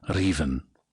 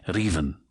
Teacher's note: Uh contrary to popular opinion, not every r is fully trilled, but every written r is acknowledged and there is movement towards the little gum ridge behind the top teeth with your tongue tip as if to trill the r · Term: trilled r